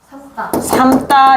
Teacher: 용원 어간에 오는 니음미음일 경우에는 된 소리 되기가 일어난다는 거야